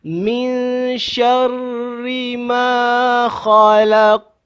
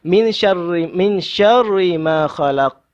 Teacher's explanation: Kita dengung, tapi pada masa dia bunyi dia adalah di antara idgham dan juga izhar, di tengah-tengah. Bunyi nunnya tidak jelas sangat, tetapi dia tidak idgham sangat. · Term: ikhfa